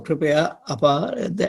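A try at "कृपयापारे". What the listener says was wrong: No, kripaya pare. Kripaya pare. There's no u, brother. Kripaya pare.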